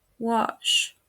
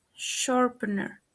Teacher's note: The first fricative sound is sh. The first word mispronounced is wash.